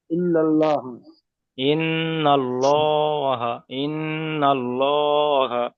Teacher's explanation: জি, গুণনা গুণনা করা ওয়াজিব, নুনটাকে একালি পরিমাণ গুণনা করে হালকা পড়তে হবে